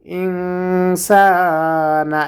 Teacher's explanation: এখানে গুণনা হবে, নাকের ভেতর লুকায়ে গুণনা করতে হবে, কারণ নুন সাকিনের পরে ইখফার হরফ সিন এসেছে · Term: গুন্না